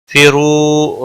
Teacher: را پیش کی وجہ سے پر پڑا جائے گا